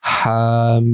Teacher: Bacanya ha-nya 2 harokat dan mim-nya 6 harokat.